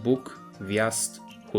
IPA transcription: buk, wjast and hut